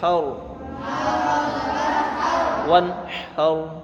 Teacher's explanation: وقف کی، ہا رو زبر حر، اور رو کو پور پڑھیں گے کیونکہ رو پر جزم ہے